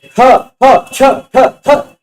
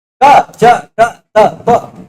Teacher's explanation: बोलने में ज्यादा हवा निकल के आ रही, महाप्राण बाहर है, क च ट त प कम हवा निकल के आ रही, अल्प प्राण